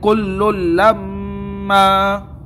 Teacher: تنوین کے بعد لام آیا ہے، ادغام تو ہوگا، گنہ نہیں ہوگا۔